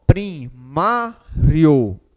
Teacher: Observe que o ó ele tem um som forte ou seja ele é a vogal aqui nesta palavra ele tem um som mais forte enquanto que a letra i ela tem um som mais fraco · a gente está partindo de um som fraco para um som forte, ou seja, estamos em ascensão, estamos subindo. Então, a gente chama este caso de ditongo crescente.